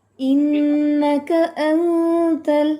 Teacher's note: انت میں جو حمزہ ہے پہلا، اس کو اپنے سختی سے پڑھنا ہے